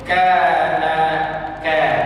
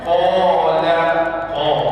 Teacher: Pasal qa huruf tebal. Jadi ada ketika mad dibaca nipis seperti kana, ada mad dibaca tebal seperti yang qala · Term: mad nipis